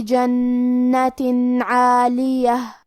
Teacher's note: نیچے تنوین زیر ہے اور اس کے بعد حرف العین ہے، عین حروف الاظہار میں سے ہے تو ہمیں یہاں تنوین کو ظاہر کرنا ہے اور بغیر غنہ سے